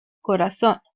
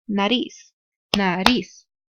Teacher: These words can be identified by la fuerza de voz in the last syllable. If they end with an N, S, or a vowel, they need a tilde or accent mark to indicate la fuerza de voz.